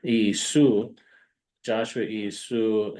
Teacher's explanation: It went from Joshua into Greek is Jesus. Greek doesn't have a sh sound, so the sh becomes a s.